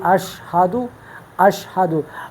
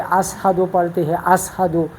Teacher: لوگ شین کو، خاص کر جو انڈیا کے لوگ ہیں، تو وہ اشہدو شین کے بجائے سین پڑھتے ہیں